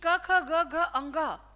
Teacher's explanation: क, ख, ग, घ, अंग, इनका उच्चारण स्थान कंठ होता है भाई